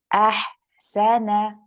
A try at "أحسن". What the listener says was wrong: So do you see that at the end of the ha, there's like a pause? You're saying ahsana. There's like almost like a sakt, almost like a pause after the end. Now, what I want is I don't want that pause there. want you to keep your ha going and then straight for the scene. Ahsan, ahsan.